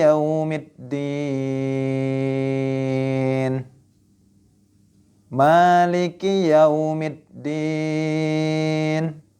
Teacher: Adapun di Maliki yaumiddin dibaca panjang dua harakat